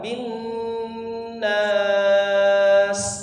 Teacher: Ba ditasydidkan, bi rabbin. Kemudian nun bertasydid tadi, gunnah akmal ma takun, gunnah musyaddad atau istilahnya sama, dipanjangkan 3 harokat